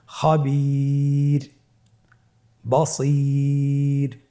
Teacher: এখানে আপনারা দেখতে পাচ্ছেন স্ক্রিনে যে ওয়াকফের কারণে রটাকে সাকিন দেওয়া হয়েছে এবং তার পূর্বে ইয়া সাকিন রয়েছে, তাহলে সর্ব অবস্থায় আমরা রকে পাতলা করে পড়ব